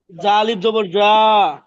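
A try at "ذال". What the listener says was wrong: জা না তো জাল জাল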